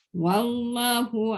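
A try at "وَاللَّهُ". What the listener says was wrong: kalimah Allah tak boleh pendek.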